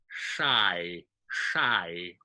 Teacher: it's a lot like an SH, but it's a lot more airy